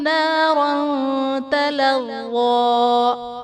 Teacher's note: نَارًا تَلَظَّىٰ، را پر دو زبر کی تنوین ہے، تنوین کے بعد حروف اخفا میں سے تا ہے تو یہاں پر اخفا کا قاعدہ ہوگا، یعنی تنوین میں ہم غنہ کر کے پڑھیں گے۔